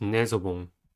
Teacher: Nasal has 2 syllables and the stress is at the first one. The first syllable is nay.